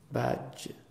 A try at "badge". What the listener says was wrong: You're saying C-H, okay? It's badge. You're saying this one.